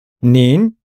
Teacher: You, in the polite form, it's in the second tone.